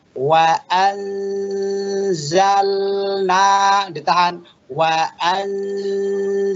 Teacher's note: nun mati ketemu dengan za, Bapak tahan sambil didengungkan dan samar-samar